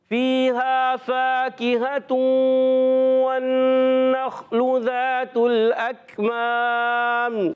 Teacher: تا کی پیش کو لام سے ملائیں گے